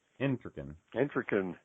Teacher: Accent on the front syllable.